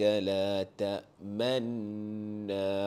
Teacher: dekat nun sabdu tu kita baca macam biasa, dengung panjang 2 harakat ditambah dengan bacaan secara ishmam, yakni isyarat muncung mulut. Daripada segi bunyi tak ada perubahan, ya, cuma ditambah dengan isyarat muncung mulut.